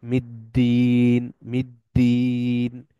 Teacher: আলিফ লাম এখানে সাইলেন্ট মিটা সরাসরি গিয়ে দালকে ধরতেছে